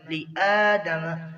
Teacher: کھڑی زبر کو ایک الف کے برابر کھینچیں گے